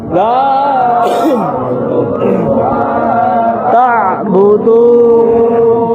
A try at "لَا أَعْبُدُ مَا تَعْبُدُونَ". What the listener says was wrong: এখানে আইন কিন্তু দুইটা আছে, প্রথম হামজার সাথে আইন. দেখবেন আমি উচ্চারণ কিভাবে করি, একটু খেয়াল করবেন. লা আ'বুদু মা তা'বুদুন. কারণ হামজা আইন কাছাকাছি মাত্রা, হামজা টাইপের হিসেবে আইন হয়ে যাবে.